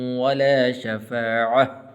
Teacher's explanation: تا حالت وقف کے اندر ہاں بن جاتی ہے